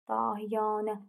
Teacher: Çünki uzanma fərq yaratmır. Birinci və üçüncü hecalardakı A sayt uzun tələffüz olunur, düzdür. Vurğu sonuncu hecəyə düşür.